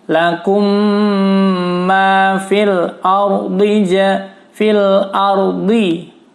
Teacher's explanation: Fil ar, ro-nya tebal karena sebelum ro barisnya fathah.